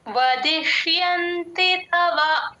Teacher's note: ష సగమే పలుకుతాం ఇష్ అని తీసుకుంటాం